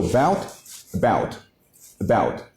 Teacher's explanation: you just add a very short vowel at the beginning. So bout, about, about. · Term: weakest sound